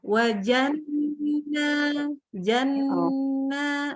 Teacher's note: Nun tasydidnya kurang sayang. Nun tasydidnya harus didengungkan.